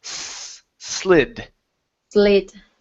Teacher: instead of saying Zid with a z sound it's an unvoiced s